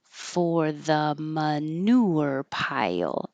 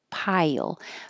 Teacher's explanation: your tongue goes high for I and then slides down for the L.